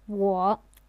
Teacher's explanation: I or me is 我, also the third tone.